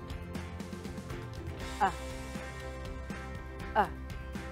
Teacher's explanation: tongue is lifted a little bit and pulled to the back my lips are relaxed and I make the sound short and relaxed · your mouth shape doesn't change when you make the sound also it's a short vowel sound so remember to pronounce it short and relaxed listen to me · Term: uh sound